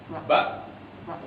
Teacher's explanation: Sifat syiddah ketika dia dilafalkan dia terkunci itu. Ba, seperti huruf qalqalah juga ketika dilafalkan dia terkunci.